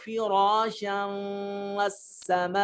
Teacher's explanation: فراشم میں دیکھیے یہ نون تنوین ہے، اس کے بعد واو آ رہا ہے تو یہاں اس کو ملا کر ادغام کر کے پڑھیں گے